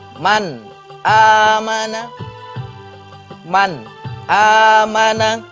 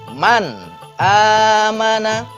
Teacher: Jadi ketika huruf nun sukun atau tanwin bertemu dengan 6 huruf izhar halqi, tidak boleh didengungkan, tetapi harus dibaca jelas.